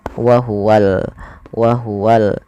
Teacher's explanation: sini kita namakan dengan alif lam yaitu alif lam qamariah maka Alif lamnya harus dengan jelas dibaca lam nya